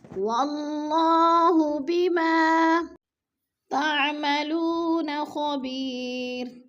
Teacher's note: واللہ بما، بما پہ الف مدہ، الف خالی سے پہلے میم کے اوپر زبر ہے تو الف مدہ کو ہم نے ایک الف دو حرکات کے برابر لمبا کر کے پڑھنا ہے